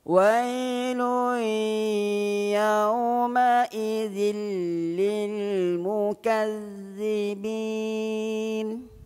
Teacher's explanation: ketika kita menuturkan ro tersebut membunyikan ra maka kita mengembungkan mulut nak tebalkan Ra dengan kembungkan mulut